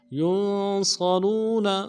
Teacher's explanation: یا کو نون ساکن کے ساتھ ملانا ہے، نون ساکن میں غنہ کریں گے، صاد کو موٹا ادا کریں گے، موٹا حرف ہے، سیٹی موٹی ہوگی. را کو واو کے ساتھ ملانا ہے، واو مدہ ہے، ایک الف مدہ میں کھینچیں گے، نون کو نرم سے ادا کریں گے، وقت کی صورت میں نون کو ساکن کریں گے.